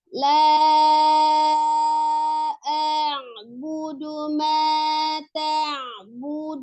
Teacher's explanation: budu domahnya sempurnakan monyongkan kedua bibir ya. Budu ma-nya harus 2 harakat mentabi alif.